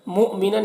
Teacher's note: حمزہ ساکنہ ہے تو جھٹکا لگا کر پڑھنا ہے